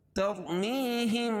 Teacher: تَرْمِيهِمْ، تر را ساکن سے پہلے زبر یا پیش ہو تو را پر ہوتی ہے، اس کو موٹا پڑھتے ہیں، اور یہاں را ساکن سے پہلے زبر ہے۔ میہم یا ساکن سے پہلے زیر ہو تو یا مدہ، اس کو ایک الف کے برابر کھینچ کے پڑھیں گے